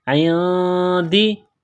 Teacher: من عندی، عین کو نون کے ساتھ ملانا ہے، نون ساکن ہے، نون ساکن کے بعد دال ہے تو یہاں پر اخفا کریں گے، آواز ناک میں چھپائیں گے